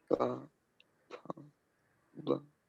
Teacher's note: दोनों होठ आपस में टकराते हैं इसलिए ओष्ठ